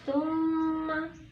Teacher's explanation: dibaca gunnah karena mim tasjid